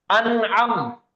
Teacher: عین ہے, اور عین حروف ہے حلقے کے 6 حروفوں میں سے ہے, تو یہاں پہ اظہار کا قاعدہ ہوگا, نون کی آواز نارمل ظاہر کر کے پڑھیں گے